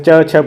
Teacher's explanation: च छ किस वर्ग में आता है तो आप बताओगे तालू में